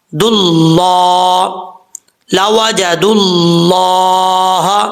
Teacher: اسی طریقے سے یہاں پر دیکھیں، دال کے بعد جو ہے واو ہے، اب ہم جب دال کو لام سے ملائیں گے تو بیچ میں واو اور الف گر جائے گا، اس کو نہیں پڑھیں گے۔